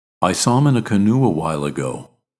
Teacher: when we move from U to uh we naturally insert a slight W sound between the vowels